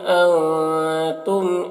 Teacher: وہ ان کے نون میں اظہار حقیقی ہوگا، سے جلد پڑھنا۔ اور تم کے نون میں اخفا ہوگا، تم کے میم میں اظہار شفوی ہوگا۔ اللہ میں الف مدہ ہے، ایک الف کے برابر کھینچے گا۔